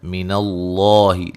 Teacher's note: लफ्ज़ अल्लाह को मोटा अदा करेंगे, उससे पहले हर्फ पर ज़बर है।